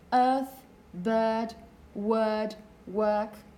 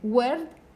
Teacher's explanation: you can hear the R, and you can hear a slightly different vowel sound. Okay? So this is what we mean by rhotic accent, that the R that would probably be silent in lots of standard British accents is present still.